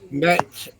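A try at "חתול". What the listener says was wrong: That's a chet. The first one is a chet. Chet then tav. Cha.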